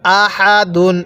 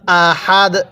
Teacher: এই দালের উপর যে দুই পেশ আছে আমরা এই দুই পেশকে বাদ দিয়ে দিব ওই ওয়াকফ করার কারণে